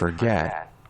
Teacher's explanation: फॉर पे कोई stress नहीं था, गेट पे स्ट्रेस था, तो जो लास्ट में स्ट्रेस दिया सेकंड सिलेबल है, फॉर फर्स्ट सिलेबल था, गेट सेकंड सिलेबल था।